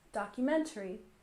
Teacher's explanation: we stress the third syllable in documentary